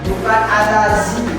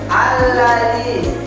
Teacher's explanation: Da itu lidahnya digigit. Da. Alladzi bukan alaji, bukan alazi, ya. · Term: huruf da